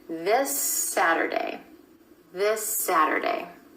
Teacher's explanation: That final S sound at the end of this is continuing on into the word Saturday.